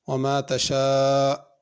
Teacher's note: وما تشاء الف پہ مد ہے، اس کو کھینچ کے پڑھنا ہے